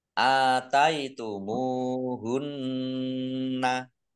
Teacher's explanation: Mim domah wawu sukun juga mat tobi'i panjang dua harokat. Nun tasdid dibaca gunnah atau mendengung ditahan dua harokat